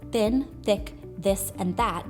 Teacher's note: The th sounds in words such as thin, thick, this, and that becomes very dentalized, that hard, flat sound at the back of the teeth. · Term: fricative th sound